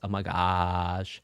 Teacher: when like people talk like this, oh my gosh, that's using vocal fry.